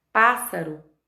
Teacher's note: a sílaba tônica ela se está posicionada na antepenúltima sílaba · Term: proparoxítona